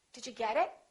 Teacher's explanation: in the first sentence, I emphasized get, but I didn't emphasize it, because it is not a noun. It is a pronoun.